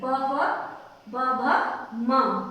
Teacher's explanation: ओष्टम means होठ। होठ से जो बोले जाते हैं